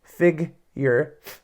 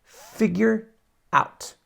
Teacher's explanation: my teeth go on my bottom lip to get that sound no voice though